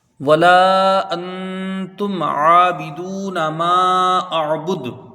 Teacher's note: نون ساکن کے بعد حروف اخفا کا تا ہے، 1 الف کے برابر یہاں غنہ ہوگا، اخفاء حقیقی، ٹھیک ہے۔